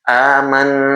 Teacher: Nun bertasdid adalah gunah. Jadi, suaranya melalui rongga hidung dan juga rongga mulut. Fiftyfifty.